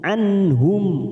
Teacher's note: nun sukun bertemu ha, namanya bacaan idhar halqi, kita baca jelas tanpa mendengung